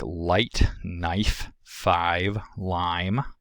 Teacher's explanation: The diphthong I goes from low central to a high front vowel.